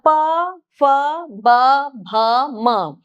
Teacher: ओष्ठ्य मतलब होठों को लगाकर